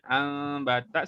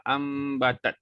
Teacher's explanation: Satu bibir buka sikit ambatat tapi dengung sama juga. Kalau tutup pun dengung jugalah ambatat. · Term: Iklab